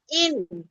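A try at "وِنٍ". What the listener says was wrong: ওয়াও দুই জের উইন। হ্যাঁ, ওয়াও দুই জের ইন না আপু, ওয়াও দুই জের উইন।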